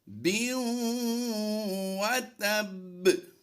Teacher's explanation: होंठों को गोल करके वाव की अदायगी करनी है, ना कि ऊपर के दांतों को नीचे के होंठ से लगाना है।